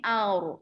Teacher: Di sini sifatnya tebal ya. Ra mati sebelumnya baris atas, sifat ra tebal istilahnya ra tafkhim ya.